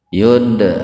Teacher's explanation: qalqalah sugro, huruf dal yang sukun di tengah-tengah kata